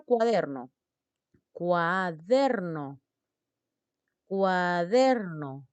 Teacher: der es la sílaba tónica